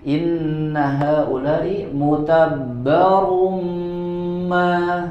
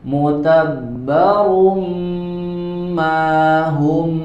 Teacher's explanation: Di sini ada tanwin bertemu dengan huruf mim, idgham bigunnah yang disertai dengan tambahan gunnah, jadi agak sedikit ditahan.